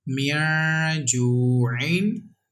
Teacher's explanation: there is vaw madda, and we have to stretch equal to one alif